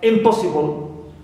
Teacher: So here po is stressed, but im is neutral. No stress on it.